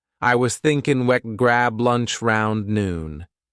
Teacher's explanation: Stressed words are thinking, grab, lunch, noon. The rest softer, quicker. They connect the sentence but don't carry the main weight.